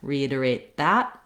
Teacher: I'm going to use more of a stopped T